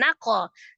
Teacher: huruf kaf sukun qalqalah dipantulkan naqo. Ban ya, ada huruf ba berharokat fathah tanwin.